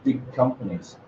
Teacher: The g vanishes because we can't go from g to k easily.